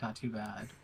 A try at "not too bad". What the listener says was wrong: Nadu bad? Uh, I need you to really enunciate the T's because then it sounds like Nadu and it starts putting me into shock.